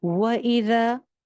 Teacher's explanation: و ہونٹ مکمل گول، سنگل حرکت